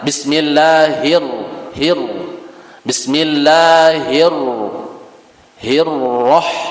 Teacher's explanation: getarannya itu cuma satu kali getaran tidak berulang-ulang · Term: sifat takrir